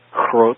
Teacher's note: in Dutch, groot, where the G is softened